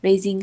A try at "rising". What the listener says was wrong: Okay, this is a rising. Rising. You said racing.